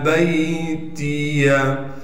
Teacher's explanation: با کو آگے یاء ساکن سے ملا دیں گے، تا کو باریک پڑھیں گے، یا کو بھی بغیر کھینچے پڑھنا ہے۔